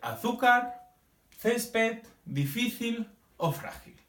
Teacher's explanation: la sílaba tónica se encuentra en la penúltima sílaba de la palabra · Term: palabras llanas